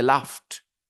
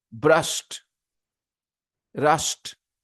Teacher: you say laughed similarly brushed rushed okay so with these sounds when you have Ed at the end then that D is pronounced as T